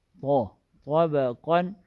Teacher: طا اور قاف دونوں موٹے حروف ہیں، اس میں زبان کی جڑ اور بیچ اوپر تالو کی طرف اٹھے گی